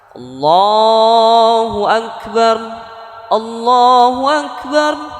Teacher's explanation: lam lafadz jalalah yang dibaca tebal didahului oleh huruf yang berharakat fathah atau dhomah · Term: tafkhim